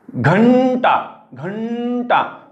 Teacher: न न म्हणताना जिभेचा शेंडा तुमचा जो आहे तो मूर्धन्याच्या दिशेने चाललेला आहे, कारण अनुस्वाराच्या पुढे ट हे मूर्धन्यमधले ट ठ ड ढ न.